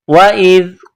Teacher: حمزہ کو ذال کے ساتھ ملانا ہے، ذال کو باریک کرنا ہے